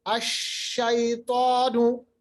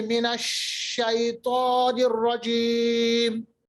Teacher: शीन की जो आवाज है ना वो फैल जाती है। तो ये जो सिफत है शीन की, इसको हम कहते हैं सिफत तफशी।